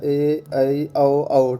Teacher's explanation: दीर्घ स्वर जिनके उच्चारण में ह्रस्व स्वर से दुगना समय लगता है उनके दीर्घ स्वर कहा जाता है।